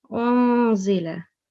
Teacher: we have nun sakin and it is followed by zal. So we have to make a small nasal sound here as well